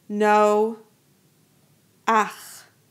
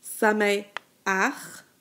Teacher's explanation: Notice that the patach is sounded before the chet. This is going to be true for all patach Genuva.